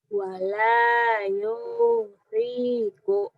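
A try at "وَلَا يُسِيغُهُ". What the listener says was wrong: Pendek sihnya.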